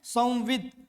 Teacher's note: संविद बोलने से द पूरा उच्चारित नहीं हो रहा है